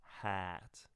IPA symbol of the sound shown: æ